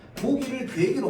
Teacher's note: 후설모음 아오 뒤에서 전설모음 이가 나오면 전설모음이 앞 음절로 끌려 나오는 현상이야. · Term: 이 모음 역행동화